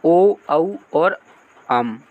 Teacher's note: ओष्ठ और कंठ से निकलते हैं